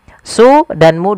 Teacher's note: kita baca dengan panjang mad tabi'i, yaitu su dan mu 2 harakat